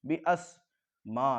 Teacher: मीम के साथ अलिफ मद्दा, अलिफ मद्दा के बाद हमज़ा इसी कलमे में है तो इसको खींचेंगे, इसलिए कि मद्द मुत्तसिल है, ज़्यादा खींचेंगे।